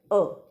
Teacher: अब आप जब उच्चारण खुद करके देखेंगे तो आपको पता चलेगा कि जब हम अ का उच्चारण करते हैं तो हमारा मुख कम खुलता है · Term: अर्ध विवृत